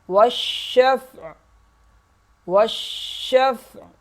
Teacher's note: آخر میں عین کی آواز نکلے گی اور قلقلہ نہیں ہوگا